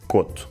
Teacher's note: o ditongo “ou” é pronunciado como um “o” fechado, “ô”, em quase todo Portugal, exceto no Norte. Tanto o apelido Couto como a palavra “coto” se pronunciam “coto”.